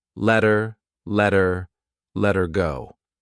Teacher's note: notice how her sounds like er you don't hear the H just R but I also attach it to the word before so I link those sounds together letter letter let her go